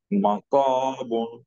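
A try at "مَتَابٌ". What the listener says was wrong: একটু তোমার মুখটা আরেকটু ওয়াইড ওপেন করতে হবে, হ্যাঁ, সাইড ওয়াইজ। মাতা, তা, তা, বুন। তোমার একটু উপর দিয়ে ওপেন হয়ে যাচ্ছে, মা প এরকম হয়ে যাচ্ছে, হ্যাঁ, মাতা, বুন।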